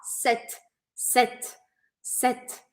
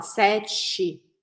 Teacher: eu paro o som na letra T